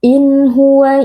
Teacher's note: nun sukun dibaca dengan jelas tanpa ada dengung tambahan